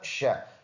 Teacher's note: شین تفشی صفت کی وجہ سے منہ میں آواز پھیلے گا